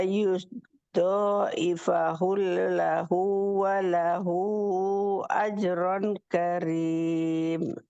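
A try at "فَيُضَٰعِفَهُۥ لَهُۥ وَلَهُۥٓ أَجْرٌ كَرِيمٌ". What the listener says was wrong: itu hu-nya ada hamzah kurang panjang Mi. Fayung dari fayung ya astagfirullahaladzim fayudhaifahu lahu do walahu ajrun rungnya dengung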